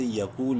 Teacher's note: زبر یا قاف واو پیش کو منہ بھر کے پڑھتے ہوئے قاف کو ایک الف برابر لمبا کریں گے واو مدہ کی وجہ سے